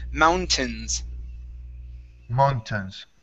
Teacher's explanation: Instead of mountains with a long A, we use a short I here.